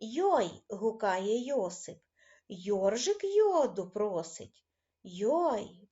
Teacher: це приголосний м'який дзвінкий звук